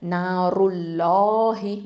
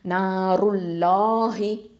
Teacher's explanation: தம்மா இருக்கிறதுனால நம்ம என்ன பண்ணணும், வல்லினமாக உச்சரிக்கணும். அப்போது நாருல்லாஹி, வாயை நல்லா ஓப்பன் பண்ணி சொல்லுங்கள், நாருல்லாஹி. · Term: லஃப்துல் ஜலாலா